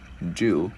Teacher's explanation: chữ U thì mình chu cái môi, cái chữ D mình bật lưỡi